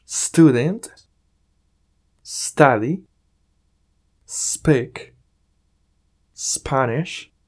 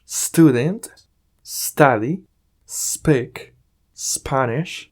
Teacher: si una palabra en inglés comienza con s más consonante se prolonga ese sonido suave de la s sin agregar nada más